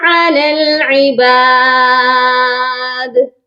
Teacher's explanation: علی العباد، لام کو ڈائریکٹ لام کے ساتھ ملائیں گے، درمیان میں یا اور الف خالی لیٹرز ہیں، ان کو ہم نہیں پڑھیں گے۔ اور عباد کی دال پر قلقلہ بھی ہوگا، کیونکہ دال ساکن ہو رہی ہے وقف کرنے کی صورت میں